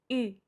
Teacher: Na verdade, é bem simples. Você vai deixar a boca no formato do U com o bico e vai pronunciar I ao invés de U. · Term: som do U